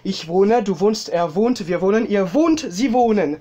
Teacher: Avec un O un petit peu plus long au niveau de la prononciation.